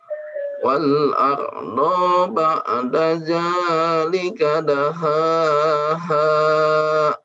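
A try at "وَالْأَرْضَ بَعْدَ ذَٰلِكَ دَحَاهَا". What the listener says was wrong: Baik, huruf dhad tidak dibaca panjang. Wal arda wal arda ba'da zalika. Silakan diulang.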